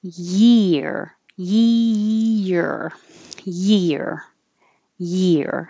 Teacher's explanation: tongue is in a Y position, which is the same as an E position